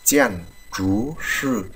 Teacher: chữ chú sư là chúng ta đọc hơi cong lưỡi một chút nặng như chữ chờ của mình, chờ trụ của mình, đúng không?